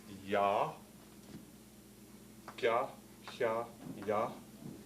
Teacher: all with the front part of the dorsum